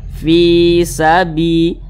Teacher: kasrah nih maka huruf tersebut dibaca panjang Makanya Fi dibaca panjang Mad thii panjangnya dua harakat